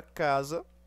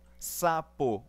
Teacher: Na palavra casa, o S tem som de Z.